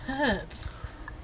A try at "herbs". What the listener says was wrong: It's actually herbs, ma'am. The H is silent.